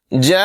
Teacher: یہاں پر مد متصل ہے، اسے 3 الف کی مقدار تقریباً 3 سیکنڈ لمبا کر کے پڑھیں گے